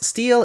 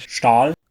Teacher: English has many clusters with the sound /s/ which are instead pronounced as /ʃ/ in German thanks to a sound shift, exemplified by cognates “steel” and “Stahl”.